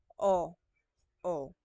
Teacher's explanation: pag o na malambot nasa likod din pero nasa gitna